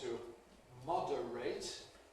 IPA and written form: ˈmɒdəreɪt (to moderate)